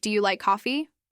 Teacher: Your voice should go up slightly to show that you're expecting a yes or no answer. That rising pitch signals openness.